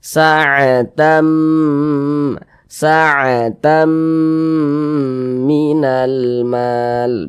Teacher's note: Tamnya itu kita tahan, kita panjangkan sejenak. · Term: gunnah